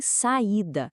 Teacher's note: os sons são vizinhos, mas cada um fica na sua própria sílaba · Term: iato